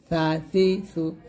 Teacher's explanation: জিব্বার আগা সামনের উপরে দাঁতের আগার সঙ্গে লাগিয়ে সা পাতলা করে উচ্চারণ করতে হবে, সা হরকত হবে সা জবর সা, সা জের সি, সা পেশ সু, সা সি সু।